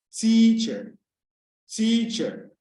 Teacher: You realize that the T is heightened and the chair is low. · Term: height in pitch